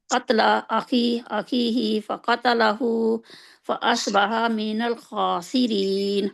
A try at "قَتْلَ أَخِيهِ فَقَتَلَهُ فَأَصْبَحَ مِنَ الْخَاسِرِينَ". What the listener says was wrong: अच्छा, आप आखिरी हरूफ जबर जेर पेश वाले क्यों लंबे खींच रहे हैं?